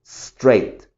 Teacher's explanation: Ni siquiera estoy diciendo es, no pronuncio esa E, solo straight.